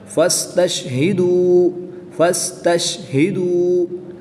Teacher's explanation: فا کو سین کے ساتھ ملائیں گے، فس، فا سین زبر فس، تا شین زبر تش، فس اور تش، ان کی ادائیگی کا خاص خیال کریں گے۔ واو ساکن سے پہلے دال کے اوپر پیش ہے، تو یہاں پر واو مدہ ہوگا، ایک الف یعنی 2 حرکات کے برابر کھینچ کر پڑھیں گے